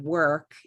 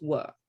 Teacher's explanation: in received pronunciation, RP, the current modern British accent, they had decided to get rid of R's. So instead of work, it's work, right?